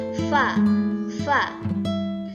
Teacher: memiliki sifat hamas dan rokhawah, di mana artinya ini mendesis dan suaranya tidak tertahan.